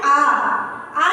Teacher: आ जब बोलेंगे तो हमारा मुंह क्या होगा, पूरा खुल जाएगा, एक गोले के आकार का हो जाएगा, तो वो क्या होता है, विवृद्ध होता है।